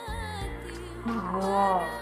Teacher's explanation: Huruf ini dikeluarkan dari tenggorokan yang terdekat dengan rongga mulut kita. Ciri khasnya terdengar suara seperti orang yang sedang mendengkur. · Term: huruf Ho